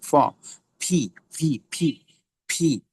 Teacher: ফি এর সাউন্ড হবে দুই ঠোঁট হালকা করে বাতাস ছেড়ে বলতে হবে, দুই ঠোঁট দিয়ে উচ্চারণ করতে হবে। প না, পি এর উচ্চারণ ফ এর মতো হবে।